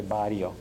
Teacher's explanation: don't distinguish between a tap and a trilled r so none of them are rolling their RS